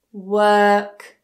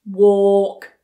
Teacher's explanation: 'work', super lazy. 'walk', jaw drops and it's rounder.